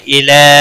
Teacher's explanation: الی لام کے اوپر کھڑی زبر ہے ایک الف کے برابر کھینچ کر پڑھیں گے